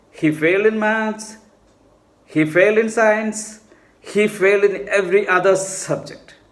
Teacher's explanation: falling rising means idea is not complete